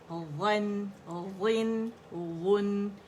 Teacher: وا موٹا ہوگا لیکن نون باریک ہوگا